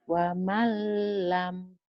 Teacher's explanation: Dileburkan, dimasukkan tapi tanpa ditahan, tanpa tanpa dengung. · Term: Idgom bila gunnah